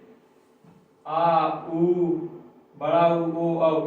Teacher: इन सब के उच्चारण में हमारे जो जीभ का पीछे वाला हिस्सा है वो ज्यादा क्रियाशील रहेगा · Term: पश्च